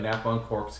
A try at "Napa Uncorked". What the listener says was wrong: You said our name wrong. It's Napa Uncorked, not Napa and Cork's. You said Napa and Corks.